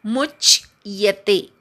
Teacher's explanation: मुच्यते मधल्या मूवर आघात घेऊन च जोडून म्हणायचा. मुच्यते. खूप जणांचा मू दीर्घ तरी करतात किंवा य चा उच्चार होत नाही, तसं होत नाहीये ना आपलं, असं बघा.